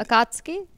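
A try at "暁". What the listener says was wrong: Yeah, it's Akatsuki. like This U is silent. So it's supposed to be like Akatsuki.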